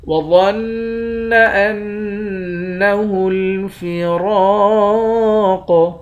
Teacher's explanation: دونوں نون مشدد پر غنہ کریں گے۔ را اور قاف ان دونوں حرف کو موٹا پڑھیں گے۔